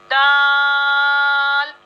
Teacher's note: जबान की नोक और ऊपर के दांतों की जड़ से ये हर्फ दाल अदा होता है, और ये 5 फिंगर्स खींच के आप अदा करेंगी, सही है।